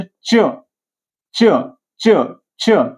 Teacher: जीभ दाताच्या मुळापाशी लागते बघा, च च च अ चा उच्चार होताना.